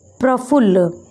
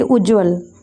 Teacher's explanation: एक ही ध्वनि 2 बार प्रयोग हो जा रही है, द्वित्व हो जा रहा है, यानी कि ला यहाँ पर 2 बार प्रयोग हो रहा है और ये जब द्वित्व हो जाता है इसे ही हम युग्मक ध्वनियाँ कहते हैं।